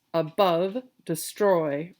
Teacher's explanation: a two-syllable combination in strict poetry terms they're called feet uh made up of one unstressed and one stressed syllable so think of a heartbeat or the pattern of short long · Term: iambic